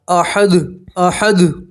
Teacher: جب دال کے اوپر جزم آتا ہے تو دال اپنے مخرج میں اتنی زور سے ٹکراتا ہے کہ ٹکرا کر واپس آتا ہے، ٹکرا کر واپس آنے کی وجہ سے اس کی آواز دو مرتبہ آتی ہے، ریپیٹ ہوتی ہے۔ · जब दाल के ऊपर जज्म आता है तो दाल अपने मखरज में इतनी जोर से टकराता है कि टकरा कर वापस आता है। टकरा कर वापस आने की वजह से उसकी आवाज दो मर्तबा आती है। रिपीट होती है। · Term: قلقلہ, कलकला